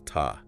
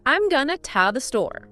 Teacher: This is when unstressed vowels turn into that very weak, lazy ugh sound. It's called a schwa.